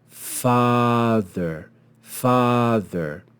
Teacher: can see the long sign over the ah long ah and this long ah makes the sound of ah in Father notice that the length of the vowel is long